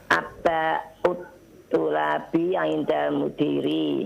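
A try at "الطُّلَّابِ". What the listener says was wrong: Tullabi, lamnya musyaddadah.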